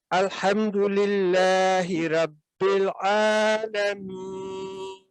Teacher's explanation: तो जब हम इस पे वक्फ करेंगे तो फिर अब ये नून जो है सुकून में तब्दील हो जाएगा, और इस सूरत में फिर हमने हरूफुल मद्दा जो पिछला है या मद्दा, उसको ज्यादा खींच कर अदा करना है, ज्यादा लंबा, समझे कि 4-6 सेकंड तक लंबा करके अदा करना है